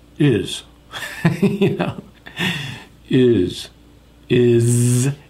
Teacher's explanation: not smiling it's like you're angry is you know is is it's a z it's a buzzing · It's a z. It's a buzzing sound.